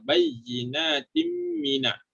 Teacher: Idgham bi gunnah. Okey, dia akan jadi dengunglah